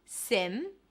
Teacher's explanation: it's an S sound, relaxed I, and then an M.